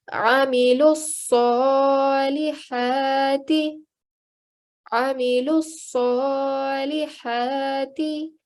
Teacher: making sure we're putting pressure on the sad and stretching the sound out for 2 seconds, because there is a vertical fatha on top. And we're also going to make sure we ignore all of these letters together.